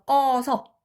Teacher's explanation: 어간의 끝소리 으가 뒤에 아어로 시작하는 어미 만나면은 떨어진다라는 거예요. 그래서 얘 떨어지고 끄가 바로 여기 와서 요 음가 없는 부분이잖아요.